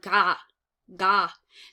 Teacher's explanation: the tongue is hitting very far back in the roof of your mouth · going gah so one of the things you'll find is that your tongue is actually hitting the back of your soft palate at the very roof of your mouth